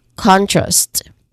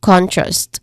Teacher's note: here we try to really emphasize the first syllable, which is con. So this is contrast.